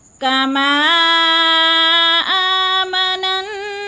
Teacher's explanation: کما کو تھوڑا سا لمبا کرنا ہے، مد متصل ہے، 4 الف کے برابر اس کو کھینچنا ہے